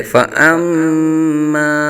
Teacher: فأما میں مشدد میں غنہ ہوگا، ایک الف تک غنہ کریں گے اور آگے حرف مدہ ہے، ایک الف تک کھینچیں گے، فأما۔